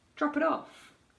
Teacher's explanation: Don't release the p on drop.